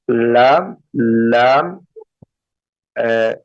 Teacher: जुबान का जो टिप है वो मुंह के अगले हिस्से में जाकर के टच हो